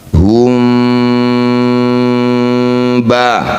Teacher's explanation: Bunyi mim baca didengungkan 2 harokat. Ketika dengung, bibir kita rapat tapi masih ada celah untuk bersiap bunyikan ba. Hum ba. Jadi rapatnya tidak 100%. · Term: ikhfa syafawi